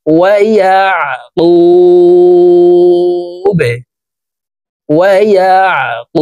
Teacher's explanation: বাকে ওয়াকফের ক্ষেত্রে সাকিন করে ফেলবো